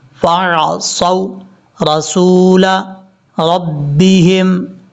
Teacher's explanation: صاد حروف مستعلیٰ میں سے ہے، پر پڑھا جائے گا. صاد کو جب واو سے کنیکٹ کریں گے تو واو لمبا نہیں کریں گے، یہ واو لین ہے، شارٹ کٹ پڑھا جائے گا